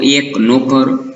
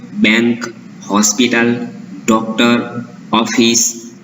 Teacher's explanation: જે એ અને ઓનો ઉચ્ચાર થાય છે તે પહોળો ઉચ્ચાર થાય છે, એટલે કે ઉચ્ચાર થોડો લંબાય છે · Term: વિવૃત માત્રા